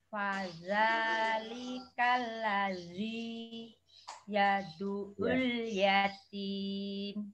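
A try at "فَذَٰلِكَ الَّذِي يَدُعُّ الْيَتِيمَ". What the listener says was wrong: Nggih, pas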